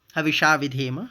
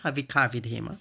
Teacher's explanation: वेद में मूर्धन्य श को ख उच्चारण किया आता है, खासकर यजुर्वेद में।